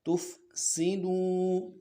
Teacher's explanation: سین کو واضح کرنا ہے، تُفْسِدُوا واو مدہ ہے، کھینچنا ہے